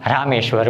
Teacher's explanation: આમ રામ અને ઈશ્વર આ બંને શબ્દ જ્યારે જોડાય છે ત્યારે એનું ઉચ્ચારણ એ બને છે. એટલે કે અ અને દીર્ઘ ઈ આ બંને જ્યારે એકબીજાની સાથે સંયુક્ત થાય છે, બંને એકબીજાની સાથે ભળે છે ત્યારે એનો ઉચ્ચાર એ બને છે.